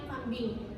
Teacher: Dalam kata ini terdapat 2 konsonan utama yaitu M dan B dan 1 konsonan akhir yaitu K. M itu konsonan bilabial nasal yang diucapkan dengan kedua bibir dan udara keluar lewat hidung. Sedangkan B itu konsonan bilabial plosif diucapkan dengan kedua bibir dan letupan udara.